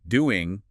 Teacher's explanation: It's a very common feature, especially in informal situations or when the ing word isn't stressed. It's a shift from a velar nasal to an alveolar nasal N.